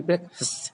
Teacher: It is breakfast, and break is self the stress, so it is going to be breakfast. Break is a louder, longer, and higher pitch.